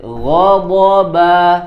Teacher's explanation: Ba-nya tipis, jangan terpengaruh menjadi tebal karena dua huruf sebelumnya tebal. Bo, jangan ba-nya jadi ba, ba, ya.